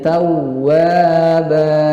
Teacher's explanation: tawwa itu ada waw, kemudian ada tasydidnya, maka ada nabroh, penekanan, ditekan, kemudian huruf wawunya itu panjang 2 harokat, mad tabi'i.